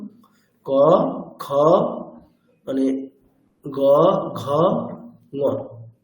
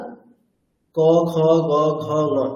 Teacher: দ্বিতীয় এবং চতুর্থ বর্ণের ক্ষেত্রে একটু হলেও বেশি ওই প্রাণ লাগছে অর্থাৎ চেষ্টা বা কষ্ট একটু বেশি হচ্ছে তো এখন এই বিষয়টি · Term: মহাপ্রাণ